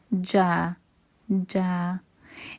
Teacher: The j sound comes from the middle of the tongue and the upper palate. Ja, ja. It's basically the same sound of j in major.